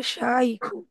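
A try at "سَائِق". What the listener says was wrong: শাইক বললে তো হবে না ম্যাডাম। না না না, সিন সা, সা। হ্যাঁ, শায়েক বললে সে তো জ্ঞানী মানুষ, আর এটা হচ্ছে ড্রাইভার।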